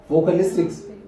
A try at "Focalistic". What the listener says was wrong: It's vocalistic, man. Focalistic. Focalistic, not vocalistic.